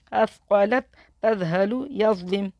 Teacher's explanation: زبان ہماری دانتوں کے درمیان میں آئے گی، زال، سا اور ضا میں. یا ضا زبر یز، لام زیر لی، یز لی، میم پیش مو، یز لیمو، یز لم، یظلم، یظلم. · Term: نرمی والے حروف